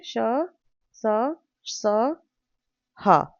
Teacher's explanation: इनके उच्चारण में घर्षण से उत्पन्न वायु का निष्काशन होता है। इसलिए इन्हें उष्म व्यंजन कहते हैं।